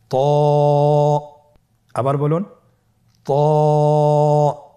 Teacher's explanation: জিহ্বার আগা সামনের উপরের দুই দাঁতের গোড়ার সঙ্গে লাগিয়ে উচ্চারিত হয়।